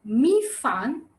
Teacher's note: the third tone and the fourth tone the falling tone